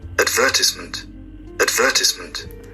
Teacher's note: Advertisement on the second syllable